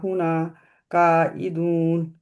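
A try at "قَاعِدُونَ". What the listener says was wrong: काइदून, का मोटा रहेगा ना।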